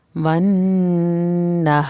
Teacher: रा के नीचे ज़ेर है तो रा पतला पड़ा जाएगा